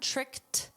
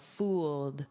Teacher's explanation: notice with tricked, it's a soft T sound, tricked, but this is a soft D sound, fooled